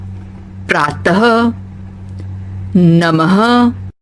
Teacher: इसे बोलते समय ह जैसी आवाज आती है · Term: विसर्ग